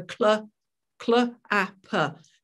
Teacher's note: in the word clap, the ker and the l are still both there, even though they sort of blend in together